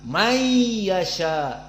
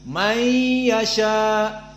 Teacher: Maka dibaca may yasha, diidghamkan nun sakinah kepada ya. Tidak dibaca nunnya langsung, dibaca ya musyaddadah. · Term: idgham bi gunnah